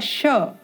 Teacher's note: अपनी जीवा को तालू में स्पर्श कराएंगे तो उच्चारण होगा श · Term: तालव्य श